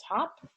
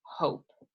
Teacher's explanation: you can hear that difference in the vowel sound ha ha has a short sound it says ah and hope is a long sound it says its name